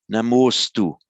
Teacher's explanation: namah astu becomes namostu, pronounced all as if it's one word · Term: sandhi